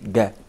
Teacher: in Egypt, yes, most Egyptians actually say ga rather than saying ja.